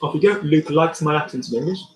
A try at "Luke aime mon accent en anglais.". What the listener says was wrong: Can we get rid of the Luke M? Can we make it one word? If your neighbour were listening, I don't want him to know the difference between the word Luke and the word M. Luke aime mon accent.